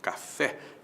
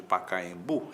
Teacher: é a última, a palavra é oxítona